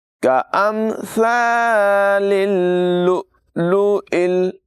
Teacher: ثا جو ہے اس میں ہرگز سیٹی کی آواز پیدا نہ ہونے دیں۔ كَأَمْثَالِ اللُّؤْلُؤِ، حمزہ ساکنہ میں جھٹکا دیں گے، یہاں پر بھی حمزہ ہے اور یہاں پر بھی حمزہ ہے، اس حمزہ کو لام کے ساتھ ملائیں گے۔